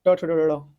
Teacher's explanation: मूर्धन्य ध्वनि होती है आपका ट ठ ड ढ, मूर्धन्य ध्वनिया होती है